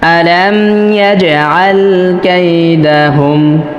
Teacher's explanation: এখানে জিমে অবশ্যই কলকলা করতে হবে, কেননা জিম হরফটা কলকলা হরফ।